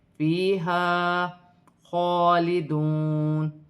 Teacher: خوا پر کھڑی زبر ہے، ایک الف کی مقدار کھینچ کے پڑھا جائے گا